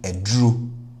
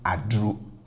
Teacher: then the A in front will be pronounced as the plus ATR version